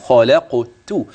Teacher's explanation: إن الخاء تفخم، اللام ترقق من قوله خالاء، والقاف تقلقل وتفخم، خلقت. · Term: تفخيم ترقيق